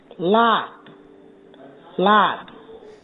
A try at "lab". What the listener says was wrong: See, not making it long enough. You're not making that second word long enough. Lap, lab. So if you don't, it almost sounds like the same word.